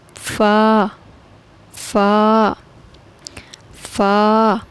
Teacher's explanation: فا جو ہے یہ تب ادا ہوگا جب اوپر والے دونوں دانتوں کا سرا اور نیچے ہونٹ کا گیلا حصہ ملے